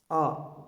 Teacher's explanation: यह पश्च स्वर है क्योंकि यह जिह्वा के पिछले भाग की सक्रियता द्वारा बोला जाता है। इसका उच्चारण करते समय जिह्वा का पिछला भाग सक्रिय होता है।